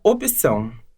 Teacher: Aparece um i rapidinho ali. Eu não sei nem se eu consigo falar sem colocar essa vogal. · Viu o que aconteceu? Aparece um I rapidinho ali. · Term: inserção, epêntese vocálica